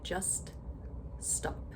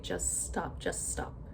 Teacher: in really fast speech, we would take it one step further and we would say just stop, just stop. Completely remove the T. So it's as if it's spelled J-U-S-S-T-O-P.